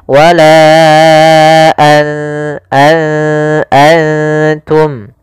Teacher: Maka apabila ada nun sukun atau dia huruf yang tanwin, an, in, un, karena tanwin dan nun sukun itu sama bunyinya, kedua-duanya adalah bunyi n, maka ketika bertemu ta, nunnya disamarkan ke huruf ta, an langsung kepada makhraj daripada makhraj huruf ta. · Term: ikhfa